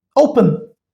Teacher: my stress is on o and it has two syllables. Again the formation is same that is consonant vowel consonant but the stress matters here.